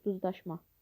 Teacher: duzlaşma sözündə olan la şəkilçisi daş şəklində tələffüz olunur və nəticədə sözdə olan duz sözündə olan D hərfi ilə daş şəkilçisində olan D hərfi eynidir.